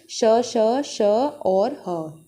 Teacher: जो मुख से ध्वनि जो सीटी के रूप में निकलती है वही आपकी ऊष्मीय कहलाती है और जो संघर्ष करके निकलती है नी घर्षण करके निकलती है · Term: ऊष्मीय व्यंजन